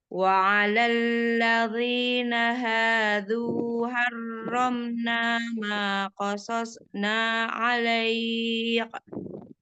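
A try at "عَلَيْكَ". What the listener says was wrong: Jangan dipantul, Mi. Alaik.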